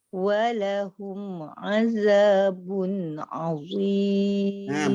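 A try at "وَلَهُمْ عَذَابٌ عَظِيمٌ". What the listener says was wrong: Pada bun, pada hum masa macam nak terputus suaranya. Ringankan bacaan. Walahum azabun azim.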